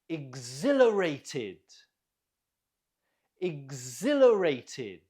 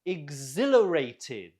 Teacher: Note the stress on the zil.